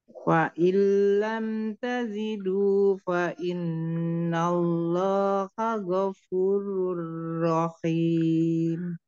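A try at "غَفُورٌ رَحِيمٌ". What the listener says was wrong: Ghafurur Rahim. Jelaskan hak pedasnya. Belum keluar ya haknya. Ghafurur Rahim.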